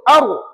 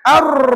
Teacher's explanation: jadi ulama kata getaran hanya sekali ataupun tidak berpanjangan